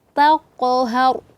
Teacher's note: huruf ta, sifatnya yaitu istifal, tipis. Dan qaf isti'la tebal. Jadi sehingga kita senyum dulu taqhar.